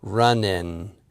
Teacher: when pronouncing a word that ends in ing, we tend to move the placement of the tongue from the soft palate up to the alveolar ridge, that little gum ridge right behind your front teeth on the top, that's where the letter N is articulated.